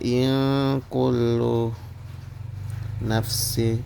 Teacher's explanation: Pertama sini terdapat hukum ikhfa, yaitu nun mati bertemu huruf kaf, yaitu disamarkan.